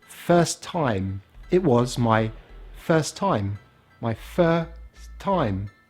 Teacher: First, and ending on the S, time. So we don't say first time. We drop one of the T's.